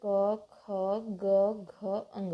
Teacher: इन पांचों वर्णों का जो उच्चारण स्थान है वह कंठ है